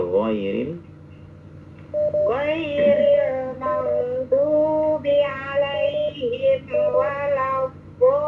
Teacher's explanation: Dolinya kurang panjang sedikit. Ini tidak boleh kurang dari 6 harokat. Mad lazim ya.